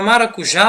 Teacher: a palavra maracujá possui a sílaba tônica já